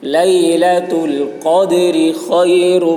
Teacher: قاف کی آواز موٹی ہوگی، دال میں قلقلہ، را کو باریک پڑھیں گے